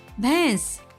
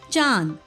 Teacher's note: چاند، چاند کو آپ چاند نہیں پڑھیں گے بلکہ چاند پڑھیں گے، ناک سے آواز نکلے گی، اور یہ نون غنہ ہے، یہ نون نہیں ہے